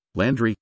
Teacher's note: stress on the first syllable in England it was pronounced Landry with primary stress on the first syllable